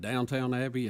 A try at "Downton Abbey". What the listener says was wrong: Downton Abbey. the name of the abbey.